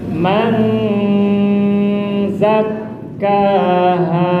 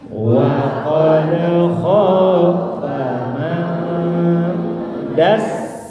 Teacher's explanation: Apabila ada nun mati atau tanwin bertemu salah satu huruf dari Sinta dan Dodo jajan sosis di Kang Taufik, maka harus ditahan lama, harus didengungkan panjang 3 ketuk